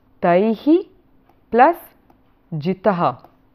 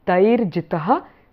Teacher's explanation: the visarga turns into the R there. So actually it's taihi plus jitaha.